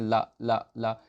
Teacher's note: ला का उच्चारण दंत से होता है, क्योंकि जब आप ला का उच्चारण करेंगे तो तालव्य से जीभ टच नहीं होती, दांत से होती है। जब आप बोलते हैं ला ला ला, तो आपके आगे वाले जो दांत हैं ऊपर के, उनमें टच होती है।